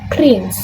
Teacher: T sound is added between the N and the S. So instead of just prince, it sounds like prince. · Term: insertion